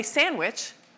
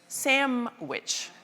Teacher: we don't say sandwich, we say samwich. That N turns into an M.